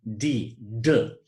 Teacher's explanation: that's an alveolar voiced plosive because we produce it by holding our tongue up against our alveolar ridge, stopping the air, and then allowing the air to explode